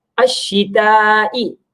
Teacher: अश्शिताई ता को बारीक पढ़ेंगे और बड़ी अलामत है मद्द मुत्तसिल, तो उसको लंबा करके खींच कर पढ़ेंगे